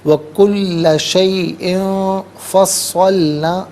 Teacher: تنوین میں یہاں پر اخفا کیا جائے گا، ناک میں آواز لے جا کر گنگنانا اسے اخفا کہتے ہیں